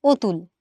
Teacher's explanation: যখন আমি এই অধ্বনির উচ্চারণটা অ এর মত না করে ও এর মত করছি তখন আমি এটাকে বলছি অধনির সংবৃত উচ্চারণ। · আমরা কিন্তু কেউ এটাকে অনেক উচ্চারণ করি না, আমরা কি বলি যেমন বানান তেমনই উচ্চারণ করি, অর্থাৎ অ কে অ এর মতোই উচ্চারণ করি, এটাকে আমরা বলছি বিবৃত। আর যখন আমি এই অধ্বনির উচ্চারণটা অ এর মতো না করে ও এর মতো করছি তখন আমি এটাকে বলছি অধ্বনির সংবৃত উচ্চারণ।